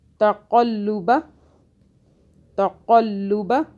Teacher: قاف کو موٹا پڑا، لام کی دو آوازیں بنائیں